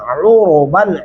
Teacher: उरुबन आइन गले से अदा करेंगे